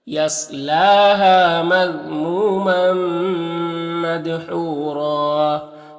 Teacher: یہاں پر 2 زبریں وقف کریں گے تو ایک زبر کے ساتھ الف پڑھیں گے اور را کو پر پڑھیں گے، اس طرح سے۔